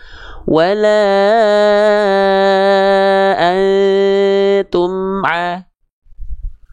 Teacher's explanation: mengizharkan mim sukun dari syafatain dari syafawi ya jadi ketika dilafalkan Ya sudah saja lafalkan amnya dengan jelas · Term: izhar syafawi